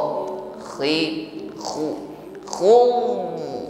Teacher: huruf Ada gesekan di tenggorokan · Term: huruf kho